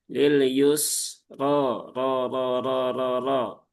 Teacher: caranya sama dengan huruf-huruf istla, yaitu dengan cara diangkat, ya diangkat pangkal lidahnya. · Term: sifat tafhim